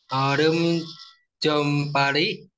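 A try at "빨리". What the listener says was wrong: Nah, kalau kalau real ketemu real lagi bacanya L, berarti ketemunya L. Pali, Pali. Nah, Pali. Jadi orem com pali, jadi bukan pari, pali gajo da juseo. nah, kalau tadi kan bacanya L, real ketemu real ya.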